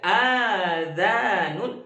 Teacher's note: kalau hamzahnya dibaca panjang dibaca azanun. Azanun dibaca panjang dua harakat maka itu berubah maknanya telinga.